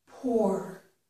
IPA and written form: pɔɹ (pour)